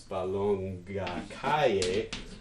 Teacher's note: And this makes a super complex tone on this first syllable here. It's a high, low, high, falling, rising tone.